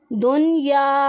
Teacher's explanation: لیکن یہاں پر آپ دیکھیں کہ قرآن پاک میں یہ جو چار حرف ہیں ان میں ہم غنہ نہیں کریں گے، کیونکہ نون ساکن کے بعد حروف یرملون میں سے یا اور واو ایک ہی کلمے میں آ رہے، اسی وجہ سے انہیں اظہار مطلق کہا جاتا ہے۔ یہاں پر ہم نے پھر اظہار کرنا ہے، نون ساکن تنوین کی آواز کو چھپانا نہیں ہے۔